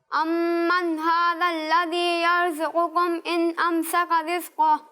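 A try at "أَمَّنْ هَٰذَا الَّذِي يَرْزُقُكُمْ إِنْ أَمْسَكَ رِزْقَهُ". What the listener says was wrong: माशाल्लाह, बहुत अच्छी कोशिश की, लेकिन मजीद बेहतरी की कोशिश जारी रखें।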